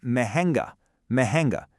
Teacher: Did you catch that slight nasal sound in the middle?